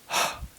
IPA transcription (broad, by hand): h